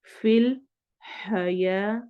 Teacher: हा हरूफ हलकी में से उसका साउंड लाने की कोशिश करनी है